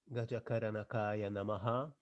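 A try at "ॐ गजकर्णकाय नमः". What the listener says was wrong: Hey, Om is there. Why not Om? Om also can be read. Gajakarnakaya Namaha after that, number 5.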